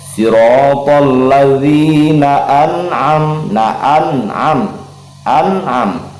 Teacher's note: nun sukun bertemu dengan ain, ia dibaca idhar halqi, dibaca jelas tidak berdengung, jangan didengungkan.